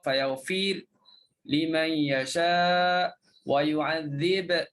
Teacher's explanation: kalau kata izhar kena sebut fayaghfir liman yasha wa yu'adzib, kena qalqalah huruf ba